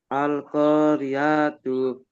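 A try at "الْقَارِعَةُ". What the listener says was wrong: আচ্ছা, রিআতু পড়েছেন, রিআতু হবে, এখানে টান হবে না। আল কারিআতু, আল কারিআতু।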